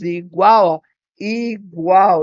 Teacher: o l de igual tem som de u né por isso que a gente tem um tritongo